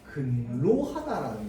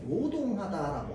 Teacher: 로가 원래 발음인데요, 맨 앞글자로 오게 되면 이 로를요 노로 바꾸어서 발음해 줍니다. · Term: 두음법칙